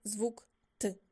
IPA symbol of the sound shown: Т